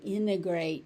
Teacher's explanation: You may also hear integrate and the t disappears.